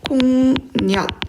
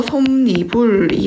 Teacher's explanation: 앞말에 받침 미음이 있습니다. 그리고 뒷말 첫 소리가 이로 시작해요. 네, 그럴 때는 니은이 첨가돼서 솜니불이 된다. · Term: 니은 첨가